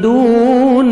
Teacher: واو مدہ، دال کو 1 سیکنڈ کھینچیں گے